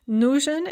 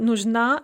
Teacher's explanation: nujin is stressed on the first syllable but nujna is stressed on the second syllable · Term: stress shift